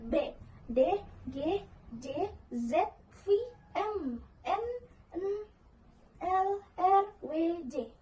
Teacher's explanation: Nah, selanjutnya ada kebergetaran pita suara, merujuk pada apakah pita suara bergetar atau tidak bergetar saat bunyi dihasilkan. Di sini ada bersuara, yaitu pita suara bergetar.